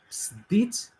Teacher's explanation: So in the word ktibt, you see that the vowel schwa is the epenthetic vowel used here, whereas in the verb sbit, you see that in addition to schwa, the high vowel e is also inserted